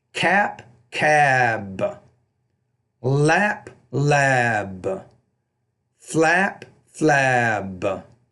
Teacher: you have to say those second sounds when the B's at the end of the word a little bit longer